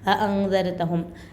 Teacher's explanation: यहाँ पर आइन का आवाज़ नहीं निकलना है। अअंज़रतहुम हमज़ा है तो हमज़ा का आवाज़ निकलना है।